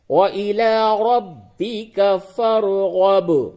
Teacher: با میں قلقلہ کیجئے کیونکہ با کے اوپر جزم ہے